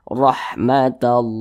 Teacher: kalau lafaz Allah sebelumnya ada huruf yang memiliki tanda baca fathah maka lafaz Allahnya dibaca tebal · huruf ra yang memiliki tanda baca fathah, maka dibaca tebal, dibaca tabkhim. Ra-nya kita tebalkan.